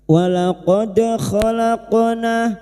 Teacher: dal sukun yang mati asli di tengah kalimat qalqalah sugro. Jangan lupa dipantulkan. Walaqad khalaqna khalaqna qof sukun yang mati asli di tengah kalimat qalqalah sugra.